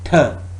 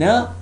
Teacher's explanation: Th, d are oral stops, whereas nasal stop is n.